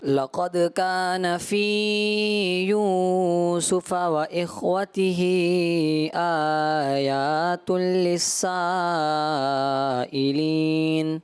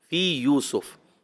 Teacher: یو کو بھی فی کو بھی آپ نے حرف مدہ ایک ایک الف رکھنا ہے